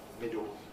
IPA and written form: ˈmɪdo (middle)